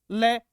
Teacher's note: यहां बगल बोलते हैं हिंदी के अंदर बगल में यानी पार्श्विक हवा है वह जीभ के दोनों तरफ से बाहर निकलती है